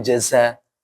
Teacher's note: kalau zai apa? Ujung lidah sama pangkal gigi seri yang bawah.